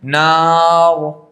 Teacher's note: را ساکن سے پہلے الف ساکن ہے، ٹھیک ہے، اور اس کے پہلے زبر ہے، اس لیے را پر ہو رہی ہے